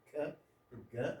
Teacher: we produce by the back of the tongue to the soft palate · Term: the velars